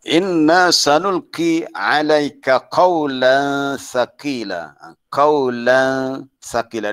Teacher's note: Di situ ada gunnah, dengung pada hukum apa tu, hukum ikhfa hakiki, tanwin bertemu dengan sa.